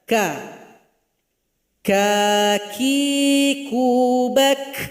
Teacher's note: Jadi dia dibaca dengan suara kita menurun tidak naik ke langit-langit. Buka saja vokal suaranya. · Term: huruf kaf